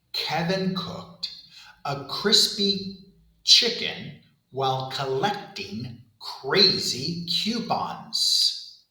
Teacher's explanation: air pressure builds up and behind the blockage and then suddenly release it. Notice there's no vibration in my throat. It's voiceless. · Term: K sound